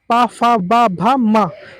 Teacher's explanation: पा फा बा भा मा ये आपका उच्चारण स्थान ओट से होता है।